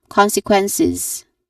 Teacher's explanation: there's a short E vowel sound and a buzzing sound at the end, despite its spelling with a letter S, which is a hissing sound supposedly.